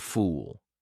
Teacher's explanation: Very close, but fool has a longer ooh sound.